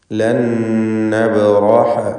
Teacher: സാക്കിനത്തായ നൂൻ ശേഷമുള്ള നൂനിൽ പൂർണ്ണമായും ലയിപ്പിച്ച് മണിക്കണം. ഇദ്ഗാം ബിഗുന്ന കാമിൽ.